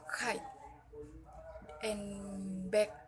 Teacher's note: menghalangi aliran udara dengan bagian belakang lidah menempel pada langit-langit lunak atau disebut dengan velar